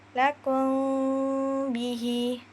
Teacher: Maka bacaannya disamarkan pada bibir perpaduan antara bunyi mim dan ba. Suara ditahan kira-kira dua harakat sambil mengeluarkan bunyi dengung dari hidung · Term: ikhfa syafawi